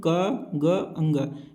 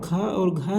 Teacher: क ग ङ ये अल्पप्राण है और ख और घ जो है महाप्राण है